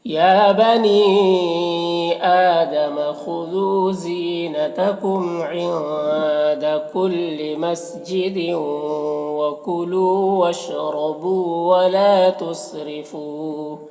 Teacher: تُسْرِفُوا را کو باریک پڑھیں گے